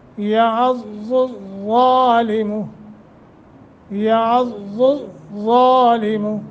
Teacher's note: ضاد اور ضا فرق کے ساتھ، لیکن دونوں میں تخفیم ہے